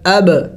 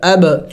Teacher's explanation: حروف قلقلہ کو چونکہ ہلا کے پڑھا جاتا ہے اس لیے میں نے اس کو ہلا کے پڑھا